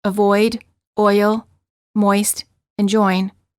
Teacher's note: the lips move from a slightly rounded oval position to a relaxed slightly parted position